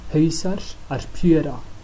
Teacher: the pronunciation of the letter a on the end of pjúra is another exception to the open closed syllable rule. It's pronounced short even though it's in an open syllable. That's because inflectional endings aren't affected by the open and closed syllable rule.